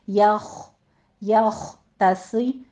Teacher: यख में या भी बारीक रखना है, खौ को पुर पढ़ना है, खौ पर हमस करेंगे इसको पुर पढ़ते हुए